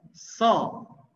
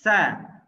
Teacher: bagian pangkalnya agak sedikit naik dan suaranya, ya, so, sedangkan sa menipis, sa, so, ya. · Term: sifat isti'la